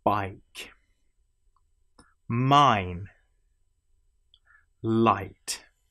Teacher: The whole shape of the mouth changes through this, and so essentially you have what feels not like a straight vowel sound, but as a curved vowel sound